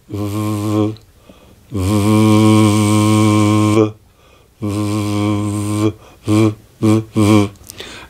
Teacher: teeth against your lower lip you don't leave a gap but you only just touch your lower lip with the teeth so you get a more open softer V sound